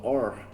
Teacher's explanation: É o R retroflexo, que é o R com a língua lá atrás.